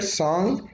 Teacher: when we have a vowel before a nasal sound then that vowel is nasalized